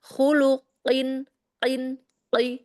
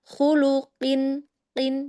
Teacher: Dia terlalu ke belakang, dia seperti terdengarnya kayak terlalu tercungkil ya.